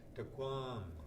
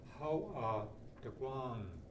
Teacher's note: This term, tukwang, and I've underlined the NG because it's not tukwang, tukwang. And again, the vocal inflection goes up on the A, tukwang. How tukwang.